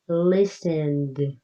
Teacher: listened ends with a d sound, less strong than looked